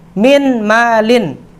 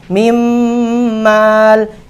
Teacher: Sifatnya huruf nun sukun hilang apabila dia bertemu dengan mim hidup